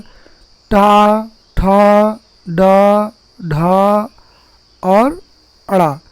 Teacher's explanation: देखिए विद्यार्थियों, मूर्धन्या वर्णा का तात्पर्य होता है मूर्धन्य वर्ण, यानी मूर्धा से उच्चरित होने वाले वर्ण